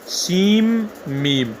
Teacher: نون کو میم میں داخل کریں گے تو وہ میم ہو جائے گا، سیم میم بولیں گے، سیم میم. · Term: ادغام